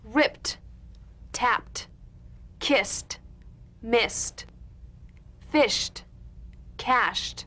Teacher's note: Let's look at some ED endings. ED endings that are really pronounced as T.